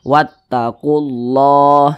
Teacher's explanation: lafaz Allah di belakangnya ada huruf yang memiliki tanda baca dhammah, maka lafaz Allahnya dibaca tebal. Makanya dibaca wattaqullah. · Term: dibaca tafkhim